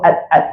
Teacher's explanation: Huruf dal, huruf d ni, hujung lidah dekat langit-langit.